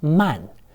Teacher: Remember that in the A-N sequence, the A is still pronounced very close to an ah sound. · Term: an with an a vowel